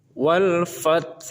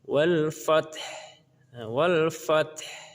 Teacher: tidak boleh huruf H ini hilang. Maka ia harus terdengar di ujung bacaan. Ini tidak boleh dibaca dengan wal fats.